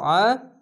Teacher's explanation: আইনটিকে মোটা করে গলা চিপে পড়বেন।